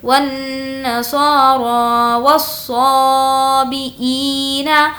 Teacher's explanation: صا کو کھینچ کر پڑھیں گے کیونکہ یہاں پر کھڑا زبر ہے۔